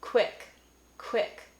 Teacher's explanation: Especially if you get that puff of air, quick. You might be saying a devoiced W